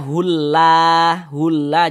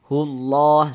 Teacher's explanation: Huruf lam jalalahnya itu kita baca tebal.